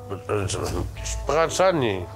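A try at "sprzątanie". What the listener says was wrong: De S spreek je eigenlijk niet uit.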